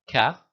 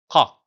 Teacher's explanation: you notice I had to open my mouth to get the sound from the back of my throat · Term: strong case